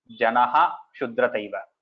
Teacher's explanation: assume that janaha is a separate word and tell the visarga completely